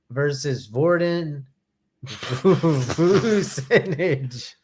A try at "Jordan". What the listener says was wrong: No, it's a J, and you pronounce it like Spanish. So how would you? Jordan.